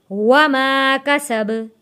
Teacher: सीन की आवाज़ सीटी जैसी आवाज़ आनी चाहिए।